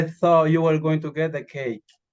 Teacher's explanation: So in this case, the word you is near. And cake is going to be pronounced with a rising tone because it was mentioned